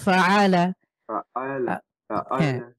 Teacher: ধাক্কা হবে না জাস্ট কন্ঠের মাঝখান থেকে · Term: আইন